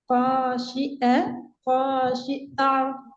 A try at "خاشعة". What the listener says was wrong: ரெண்டும் பேரையே இப்ப ஹாஷி ஆண்டு வானத்தை நோக்கி போகுது. ரெண்டுமே கீழ் நோக்கி தான் வரணும்.